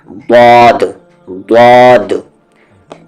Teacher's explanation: दद जबान की करवट और ऊपर के दाढ़ की जड़ से यानी मोलर की जड़ से